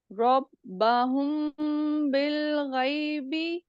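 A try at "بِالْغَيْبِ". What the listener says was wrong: غی نہیں، غی، غین موٹا حرف ہے، غین کو موٹا کریے.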